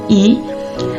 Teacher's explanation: lidah terangkat ke depan mendekati langit-langit keras dan bibir sedikit ditarik ke samping